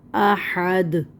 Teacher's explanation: اور احدن، ایک ایک حرکت، دال دو پیش دن، احدن پہ جب وف کریں گے تو دال کو کر دیں گے ساکن، تو یہاں پہ ہو جائے گا قلقلہ، جھٹکا آئے گا